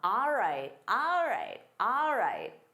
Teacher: Now, you may not have heard that first word again because of reducing sounds. So, instead of saying all right, native speakers commonly say ah.